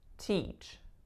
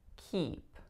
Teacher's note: the American English tense high front vowel E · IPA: /iy/